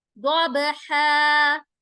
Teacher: ضاد موٹا کریں گے, با کے اوپر قلقلہ ہوگا